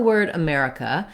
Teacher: this word has second syllable stress so the mare syllable is stressed it should be long and have a clear vowel and the other syllables are unstressed